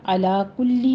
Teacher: لام کے نیچے کسرہ ہے، آواز باریک رکھیے